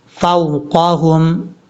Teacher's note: کو جب واو سے ملائیں گے تو یہ جو واو ہے یہ واو لین ہے، مدہ نہیں ہے، لین کا مطلب ہوتا ہے اس کو لمبا نہیں کریں گے